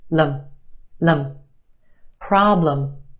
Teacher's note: Our first syllable is emphasized. The problem is stretched and emphasized in the first syllable. Our second syllable is where you have your schwa.